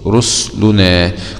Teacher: أسكن السين البصري رسلنا